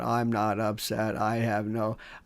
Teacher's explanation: They call it the vocal fry. It's a kind of a raspy fry monotone.